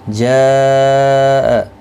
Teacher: مد متصل ہے، 4 الف کی مقدار کے برابر کھینچ کر پڑھیں گے